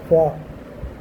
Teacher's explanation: some sounds are by combination of teeth and lips like va